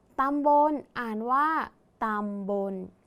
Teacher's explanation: ตัวสะกดคือลลิงแต่ออกเสียงพยัญชนะท้ายเหมือนนหนู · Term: แม่กน